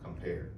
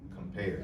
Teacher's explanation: the word compare, pair is the stressed syllable